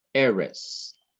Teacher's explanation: not Ares but Ares which means land or the Earth Aris the accent is placed on the syllable before the last syllable